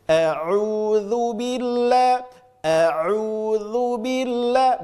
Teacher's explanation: Jangan sampai ain masuk ke hidung. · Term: huruf ain